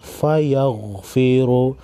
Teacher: गैन हुरूफ़ मुस्तालिया में से है मोटा पढ़ेंगे।